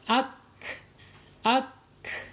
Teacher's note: akan muncul ketika dia sukun ak ak gitu ya jadi e mempunyai sifat Hamas mengalirnya nafas kita ya mengalirnya napas kita ketika mengucapkan huruf Kaf